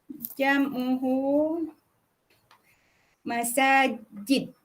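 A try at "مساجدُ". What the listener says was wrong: Masajidu. Kalau tak sebut domah, buat apa saya tulis domah tu?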